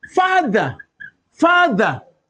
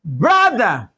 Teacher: the th is voiced